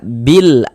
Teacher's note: Karena cara membaca huruf lamnya dibaca izhar, dibaca jelas. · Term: izhar qamariyah